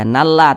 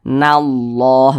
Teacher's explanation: ini tidak dibaca nalla, tapi ditebalkan, dibaca nallah begitu